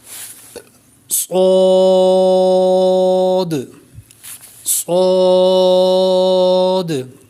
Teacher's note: صاد حروف مستعلیہ پر بھی کریں گے، اور سیٹی کی آواز بھی اس میں پیدا ہوگی، اور دال کی آواز بھی اس میں نکلے گی جس طرح کلکلا کرتے ہیں.